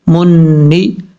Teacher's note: ایک الف کی مقدار غنہ کیا جائے گا نون مشدد کی وجہ سے · گے، تا پشتو، میم نون پیش من، نون زیر نی، منی، میم کو جب نون سے ملائیں گے بیچ میں الف اور لام کو چھوڑ دیں گے، نون کے ساتھ کنیکٹ کریں گے ، ایک الف کی مقدار غنہ کیا جائے گا نون مشدد